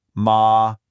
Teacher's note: first up we have the high flat tone